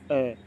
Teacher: हमारी जीभ है ना वो मध्य की मध्य में है ना तो आगे जा रही ना पीछे जा रही है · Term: मध्य स्वर